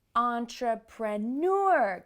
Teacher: words like entrepreneur get the stress at the end of the word because of those French roots